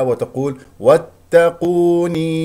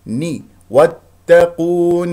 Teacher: النون هنا مكسوره لا تجعل بعدها يا